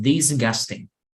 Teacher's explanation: La G no suena, right? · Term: ing ending